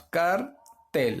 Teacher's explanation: vemos que su mayor fuerza de voz está en la última sílaba